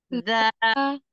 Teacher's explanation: Iya, ujung lisan ujung lidah bertemu dengan gigi seri atas za. Jadi dikeluarkan lidahnya sedikit menempel ke ujung gigi seri atas. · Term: huruf za